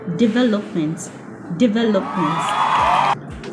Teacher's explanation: The stress is on the second syllable, so it's pronounced development. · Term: word stress